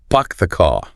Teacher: You might genuinely not recognize the word car at first. Your brain is listening for that R sound and it's just not there. It fails the pattern match.